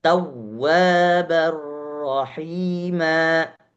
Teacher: Tekan di huruf waw yang bertasydid.